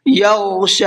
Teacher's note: یغشی، یہاں پر یہ غین ہے، غین کو پر کر کے پڑھنا ہے اور شین کو کھینچ کر کے پڑھنا ہے